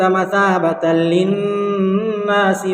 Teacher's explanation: وَإِذْ جَعَلْنَا الْبَيْتَ مَثَابَةً لِلنَّاسِ وَأَمْنًا، مَثَابَةً لِلنَّاسِ وَأَمْنًا، یہاں پر 2 زبر کی تنوین ہے، 2 زبر کی تنوین کے بعد حروف یرملون کے 6 حرفوں میں سے لام ہے، اس لیے لام کی صورت میں بغیر گناہ کے ملا کر پڑھیں گے